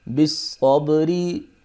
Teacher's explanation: صاد، بس، صاد زبر با، صب، بالصب، را زیر ری، بالصبری، صاد کو موٹا پڑھیں گے، با پہ قلقلہ کریں گے